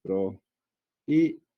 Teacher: prohíbe tiene tres sílabas. ¿Por qué? Porque justamente la vocal tónica es la I, ¿no? Entonces acá tenemos una vocal abierta, es una vocal cerrada y pasa esto. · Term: hiato